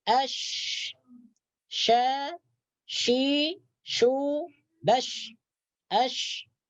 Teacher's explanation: ketika kita mengucapkan huruf shin, maka udara berhemburan di mulut. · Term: tafasyi